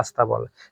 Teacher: শব্দের আদিতে একটা বাড়তি ই উচ্চারণ করি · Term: আদি স্বরাগম